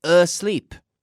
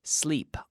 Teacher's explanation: there's no vowel sound before the S